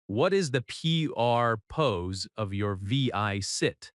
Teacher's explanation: The most important words are purpose and visit.